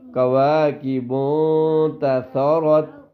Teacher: ہاں جی ہاں، تو اس میں بھی یہ دیکھو بیٹا، یہ کواکب، اس میں بھی اخفا ہوگا، ٹھیک ہے، ہلکی سی آواز ناک میں چھپے گی